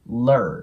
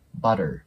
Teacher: バターに関しては▁T▁の部分をラーっぽく発音すると綺麗に聞こえます